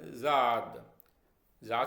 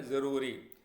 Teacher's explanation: जब हम जाद का उच्चारण करते हैं तो हमारी जीभ ऊपर के तालु की तरफ जाने की कोशिश करती है, लेकिन छूती नहीं है।